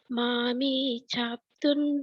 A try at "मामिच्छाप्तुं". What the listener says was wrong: मामिच्छाप्तुं, नहीं आपका च नहीं आ रहा, मामिच्छाप्तुं, छाप्तुन प छाप्तुन, हाँ मामिच्छाप्तुन,